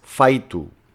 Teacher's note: La fricativa j se debilita en una semivocal y da i. El resultado es faitu. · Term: sonido palatal